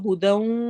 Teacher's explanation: ہدن کو آگے ہم جب ملائیں گے تو وہ ہدوں ادغام غنہ کے ساتھ ہوگا